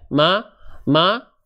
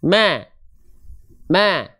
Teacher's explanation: ketika senyum suaranya lebih tipis karena ada dua sifat yang lebih tertunaikan ketika kita melafalkan huruf